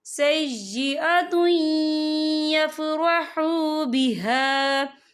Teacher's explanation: یہاں دیکھیں سَيِّئَةٌ، تا کے پر تنوین ہے، تنوین کے بعد جو ہے یا آ رہا ہے، اور یا جو ہے حروف یرملون میں سے ہے، تو یہاں پر ادغام ہوگا. ہم اسے تھوڑا سا غنّے کے ساتھ پڑھیں گے